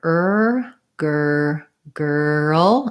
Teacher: try to think of it almost as being two syllables with a dark l